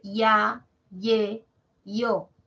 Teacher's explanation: en el ditongo creciente ya y e y y o siempre la mayor fuerza de voz la debe tener la a la e y la o nunca la i